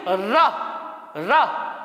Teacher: अगला है लुंठित व्यंजन। लुंठित मतलब जब जीभ लुंठित हो जाती है, वाइब्रेट होती है, या इसको कहते हैं कंपित व्यंजन भी कहते हैं।